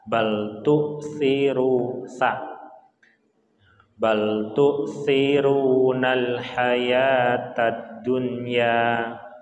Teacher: Jadi tu'thir pakai hamzah, jadi ditahan.